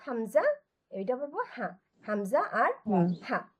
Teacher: গলার নিচ থেকে আমরা দুইটি হরফ উচ্চারণ করব, হামজা এবং হা।